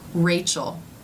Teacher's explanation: if the r comes at the beginning of a word like in my name Rachel the lips may take a very tight Circle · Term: beginning R